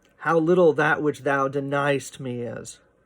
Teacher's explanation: There is an elision that's sort of suggested in deniest. You have to kind of mush that together. Instead of 3 good syllables, you kind of get deniest out of it, right?